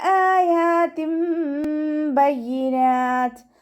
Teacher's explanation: തെൻവീനിലുള്ള നൂനിൻ്റെ സൗണ്ടിനെ മീമാക്കി മാറ്റി മറിച്ചിട്ട് ഉന്നയോട് കൂടി ഒതിക്കൊടുക്കുക. മീമാക്കി മാറ്റി മറിക്കും ചെയ്യുക. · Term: ഇഖ്ലാബിൻ്റെ മീമാണ്